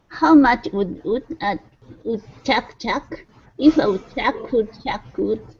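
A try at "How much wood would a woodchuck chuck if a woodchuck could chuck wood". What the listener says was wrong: try to pronounce the the wood a little more rounder make sure your lips make sure your lips round when you say ooh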